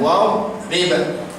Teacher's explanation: Lagi satu dad sukun. Kita sambung cepat sangat menyebabkan dad tu dia jadi qalqalah, sedangkan dad bukan huruf qalqalah.